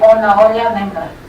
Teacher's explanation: Then the second contour that we found was similar as in Peninsular Spanish, so you have the two phrases with a higher boundary in between